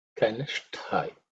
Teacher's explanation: in the Kanishta also, the shtha is the only one where you had to put a bit of effort. It should be aspirated.